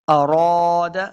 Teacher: اذا اراد، اراد، حمزہ کو لمبا نہیں کریں گے، را کو اوپر پڑھنا ہے، را کے آگے الف ہے، تو ہم نے اس کو دو حرکات لمبا کیا ہے